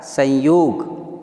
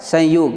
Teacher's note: संयोग, यानी कि यह म जो है वो अनुस्वार में बदल जाएगा